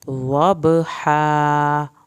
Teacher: ضاد پڑھنا ہے، با کا قلقلہ کرنا ہے، ہا کو حلق سے ادا کرنا ہے اور الف ہے تو اس کو لمبا کرنا ہے